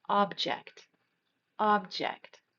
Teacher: the first pronunciation is going to stress the first part of the word